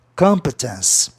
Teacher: É como se fosse duas consoantes no fim. Aí a sílaba tônica está na terceira casa silábica de trás para frente, que é justamente no O